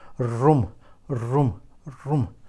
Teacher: room okay it's very short very little piece of the tongue very little piece of the tip of the tongue is trembling